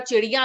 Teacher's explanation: आपने इया को नेजलाइज कर दिया, नाक से बोलने लग गए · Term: नेजलाइजेशन